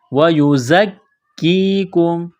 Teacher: زا میں سیٹی کی آواز پیدا کریں گے